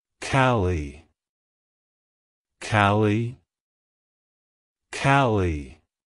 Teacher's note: emphasize the first syllable and pronounce the second syllable with a short E sound